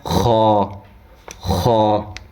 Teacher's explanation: حلق کے شروع سے جو منہ کی طرف والا حصہ ہے نا وہاں سے خا ادا ہوتا ہے